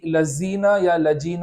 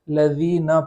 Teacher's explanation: لذینہ کے اندر جو ذال ہے اس کو زا یا جیم، لذینہ یا لجینہ نہیں پڑھیں گے بلکہ لذینہ پڑھیں گے۔